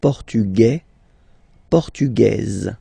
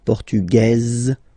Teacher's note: it will be only in this z sound the difference between the masculine form and The Feminine form